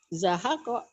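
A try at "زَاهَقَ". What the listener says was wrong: Ja-nya panjang. Zahako.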